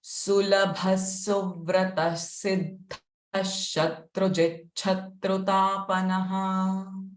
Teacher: First two visarga sa sound. Siddha visarga will have sh sound.